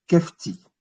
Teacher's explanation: c'est un H qui se prononce K, comme un KH